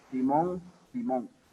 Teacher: La N en posición final absoluta se realiza como una nasal velar